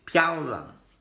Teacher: Fourth tone, pia, fourth tone, so down quickly